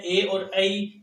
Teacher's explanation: बचे हुए जो स्वर है ए और ऐ, इनका उच्चारण स्थान दो है, कंठ और तालु, इसलिए इनकी नाम ध्वनि है कंठ तालव्य।